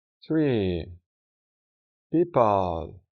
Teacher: debemos hacer una i un poco más larga que la i en español, unas dos o tres veces más larga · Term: long eye